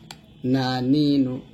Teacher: তারপর হচ্ছে নুন, জিহ্বার আগা তার বরাবর উপর তালুর সঙ্গে লাগিয়ে নুন উচ্চারণ করব